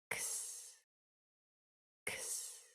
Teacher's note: The sound for X is a KS, voiceless, only air. X. A KS sound.